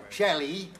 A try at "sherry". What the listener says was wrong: No, sherry. No, sherry. You're saying Shelly.